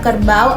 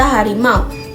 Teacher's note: mulut dan lidah tidak berhenti di tengah, tapi langsung bergerak dari bunyi a ke U. Begitu juga pada kata harimau. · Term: diftong